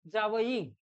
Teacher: जाचं उच्चारण काढायचं असतो त्यावेळेला तालू प्लस दात यांचा वापर केला जातो. म्हणजेच याला कोणतं वर्ण म्हटलं जाईल किंवा कोणतं प्रकार म्हटलं जाईल तर तो आहे दंत तालव्य.